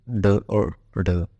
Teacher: इनका उच्चारण करते समय जीवा ऊपर उठकर झटके के साथ नीचे आती है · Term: क्षिप्त व्यंजन